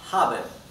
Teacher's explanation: La h no es muda en alemán. La h se pronuncia como una J muy sutil, como una exhalación en realidad.